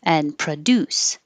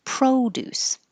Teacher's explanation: produce is the verb produce and produce is the noun so when the verb has stress on the second syllable the first syllable with the pro becomes pra and not o